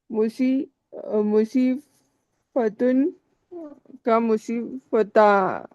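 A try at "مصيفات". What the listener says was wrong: मुजीफात, अलिफ के फा के बाद अलिफ लगता है। हाँ मुजीफात, क्या मतलब इसका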